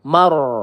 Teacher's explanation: ro sukun didahului dengan harakat fathah maka kita baca tebal